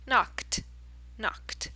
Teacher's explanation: Then we get knock, knock. Ends in k sound, which is unvoiced.